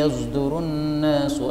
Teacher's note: Pertama pada yasduru, ini boleh dibaca dengan shad, boleh juga dibaca dengan ismam. Ismam yang dimaksud di sini adalah shad dicampur dengan zain.